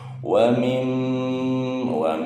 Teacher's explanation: Jadi ada dengungan di huruf mimnya, ditahan dulu setengah hidung. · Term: gunah musaddada